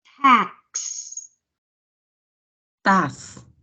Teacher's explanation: the X there has two letter sounds like K and S so you're going to sound it like hacks stuff yes okay